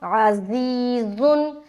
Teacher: زا میں سیٹی والی آواز آئے گی